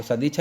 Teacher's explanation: सत्य धन इच्छा, और तय जो है वो घोष आने के कारण दय में बदल जाता है, तो सदिच्छा इसका सही रहेगा।